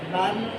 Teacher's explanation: नाक में अपनी आवाज़ को एक अलिफ के बराबर खड़े रखना। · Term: गुन्ना